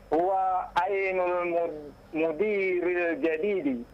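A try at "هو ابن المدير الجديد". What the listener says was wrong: Tidak mungkin huwa ainu. Tidak mungkin itu. Itu ba. Huwa benu.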